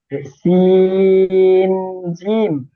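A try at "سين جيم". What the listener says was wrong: জিম টান দেন, জিম।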